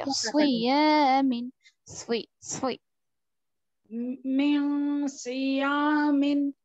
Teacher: ठीक चलिए मैं सियामिन वेरी गुड मैं सियामिन जी, लेकिन यहाँ पर स्वाद है ना, तो जी स्वाद हुरूफ मुस्तालिया में से है, यानी पुर पढ़ा जाने वाला हर्फ है, तो आप इसको क्या करेंगे मोटा पढ़ेंगे, मैं सुई मीन सुई सुई सियामिन जी।